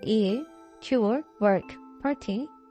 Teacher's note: When the following R is in the same syllable, as in ear, cure, work, party, the vowel takes on some retroflex quality. 모음이 반전음, 건설음의 그런 자질을 좀 갖게 된다 라고 하고 which is commonly known as R coloring.